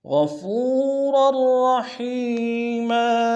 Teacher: را کو تنوین کو اگلے را کے سامنے لانا ہے، شد ہے زور دیں گے، دونوں را کو موٹا ادا کریں گے